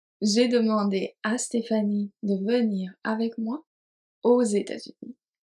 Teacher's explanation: Just here in this example, we add a liaison between O and États-Unis.